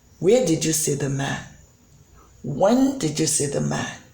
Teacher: in the case of when did you see the man, you can see that the pitch falls at the end. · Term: falling intonation